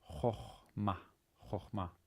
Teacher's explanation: That's one of the rare cases where the kametz is actually, the first kametz is an o sound, so-called kametz chatuf.